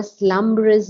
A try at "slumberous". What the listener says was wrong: Yeah, we have to be careful on these things like slumbrous because it's only two beats, not slumberous, but slumbrous.